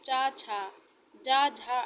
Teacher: श्वास में कुछ संघर्ष रगड़ के साथ निकलती उन्हें स्पर्श संघर्षी कहते हैं